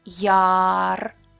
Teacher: The first Ya is stressed. It's clear and long.